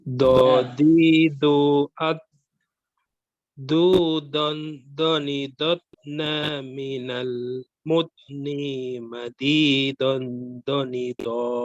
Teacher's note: Ulangi lagi untuk dot ya sukun dia tidak ada pantulan.